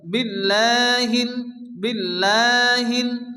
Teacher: আল্লাহ শব্দের শুরুতে জের আসলে আল্লাহর লামকে বারিক অর্থাৎ করে পড়তে হয়